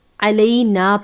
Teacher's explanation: علینا، عین کو ہمیشہ باریک پڑھتے ہیں، لام یا زبر لئی، یا ساکن سے پہلے زبر ہے یا لین، علینا، الف سے پہلے زبر ہے الف مدہ، چھوٹی مد ہے 2 یا 3 الف کی جتنا لمبا کریں گے، اور یہاں پر بھی آپ نے نون کی آواز پر غنہ نہیں کرنا، یعنی علینا نہیں پڑھنا بلکہ علینا پڑھنا ہے الف کی آواز کے ساتھ۔